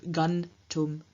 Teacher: in front of the dental stop T, the labial nasal M at the end of gum changes into the dental nasal N, and so we have the infinitive gun tum to go.